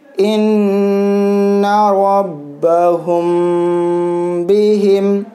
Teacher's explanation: میم ساکن کے بعد با رہا ہے تو یہاں پہ میم ساکن میں اخفاء کرنا ہے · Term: اخفاء شفوی